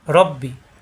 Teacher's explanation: মির পরে রয়ে যাব র, রা হবে না, র মিলবে বায়ের সাথে, রব বায়ে তাজদিদ 2 বার, পরের বায়ে জের বি, রব্বি